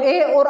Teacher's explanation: कंठ और तालु के सहयोग से ए और ऐ का उच्चारण स्थान क्या होता है? कंठ तालु से होता है।